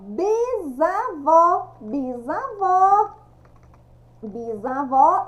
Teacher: bisavó escrita com s pronúncia com z